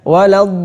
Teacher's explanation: Dalam surah Al-Fatihah itu adalah contohnya ghairil maghdubi alaihim waladdallin. Lamnya itu langsung tanpa harus dipanjangin. Nah, ini 6 harokat tapi tasdidnya lam ini tanpa dipanjangin. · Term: lam yang bertasydid